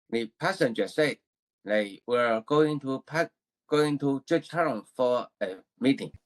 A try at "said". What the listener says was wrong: I didn't hear the D that much.